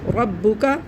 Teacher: رو موٹا پڑھیں گے، رو کے پر زبر ہے